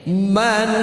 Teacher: Man jelas saja tidak didengung ya, ditahannya 1 harokat saja. Man sekedar untuk menjelaskan n-nya. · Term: izhar